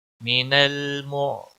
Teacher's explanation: صاد کو موٹا پڑا جائے گا، را بھی موٹا پڑا جائے گا کیونکہ اس کے اوپر مد اصلی ہے، خڑی زبر، اور ایک الف کے برابر اس کو کھینچ کر پڑا جائے گا۔